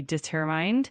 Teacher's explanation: Keep that emphasis on the second syllable, and it should be determined.